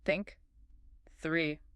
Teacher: For the unvoiced toe, as in think, your tongue is between your teeth and you just blow air. No voice box vibration. It's like a quiet hiss.